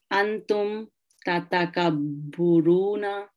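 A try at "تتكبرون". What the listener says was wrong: No, you keep changing this middle root sound. Keep this ba with fatha. So tata kabbaruna.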